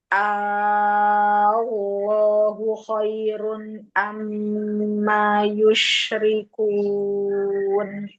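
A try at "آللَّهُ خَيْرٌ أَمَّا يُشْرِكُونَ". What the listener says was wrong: Kurang panjang mi A-nya. Lafzul jalalahnya lamnya ada tawassut. Allahu langsung tebal lafzul jalalahnya.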